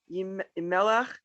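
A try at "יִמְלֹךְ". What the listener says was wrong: Look at this word. not melech. Yim loch. Yim loch. The root is melech, but the word here is yim loch.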